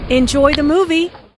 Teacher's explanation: Notice how the intonation rises on movie. This is said in a friendly way and is followed by an exclamation point.